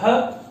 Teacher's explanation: ह देखिए ये संवार में है, नाद में है, घोष है। और ह कहाँ है, देखिए ये सल में है, इसका मतलब ये महाप्राण भी है।